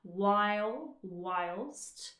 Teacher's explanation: a nice gliding vowel sound there in the first syllable